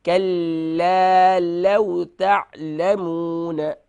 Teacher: لاو نہیں ہوگا، یہ حروف لین میں سے ہے. لام واو زبر لو، تو یہاں ہم اسے نرمی سے ادا کریں گے. لو لو لو نہیں کریں گے.